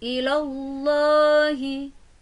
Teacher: ada lafaz jalalah Allah dan cara membacanya harus dengan tafkhim atau tebal serta tidak boleh tarkik atau tipis